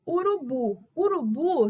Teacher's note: então o BO é a nossa sílaba tônica E o restante é a sílaba átona